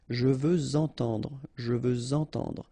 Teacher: Okay, remember we had the same rule. Even if we've got this X at the end, well, with the liaison it will sound like Z.